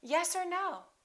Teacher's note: reduce the vowel and just say ah